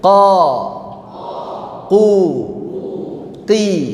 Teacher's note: Dari qa yang gemaknya banyak, kemudian qu gemaknya berkurang, qi gemaknya semakin berkurang. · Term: tafkhim